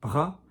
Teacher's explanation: You might want to do a little bit of a scrape, bras, but that is accent dependent. So some people will have a stronger scrape than others.